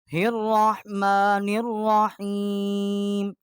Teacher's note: اس کو ہم نے را کے ساتھ مشدد کیا ہے اور را کو موٹا پڑھا ہے